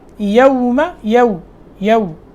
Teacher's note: ہونٹ گول ہو جائیں گے واو میں